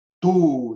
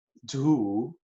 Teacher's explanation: T y D son ambas consonantes oclusivas dentales. La diferencia está en que la T, el fonema T es sordo y el fonema D es sonoro.